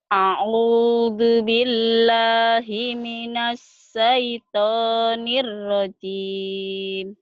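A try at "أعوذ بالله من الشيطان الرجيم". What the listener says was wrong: Sinnya nanti dibesarin ya. A'udzu billahi minasy gitu.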